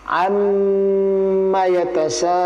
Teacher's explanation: Amnya adalah gunnah musyaddadah, tertahan.